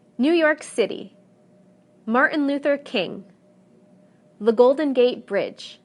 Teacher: compound proper nouns receive stress on the last segment whether the proper noun is two three or even four words